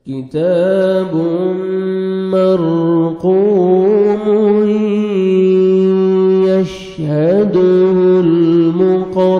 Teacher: تنوین کے بعد دیکھیں حروف یرملون میں سے یا ہے تو یہاں پہ ادغام کریں گے غنہ کے ساتھ کتاب مرقوم یشہدہ المقربون نوز میں ساؤنڈ لے کے جائیں گے